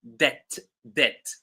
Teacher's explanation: So this word is actually pronounced debt debt. So the B is silent